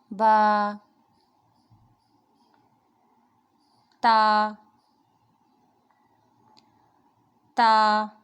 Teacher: دونوں ہونٹ ہمارے جب ان کے تر حصے ملتے ہیں تو با ادا ہوتا ہے